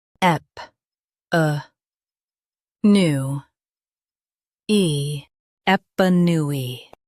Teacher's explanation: Stress new and keep ep soft.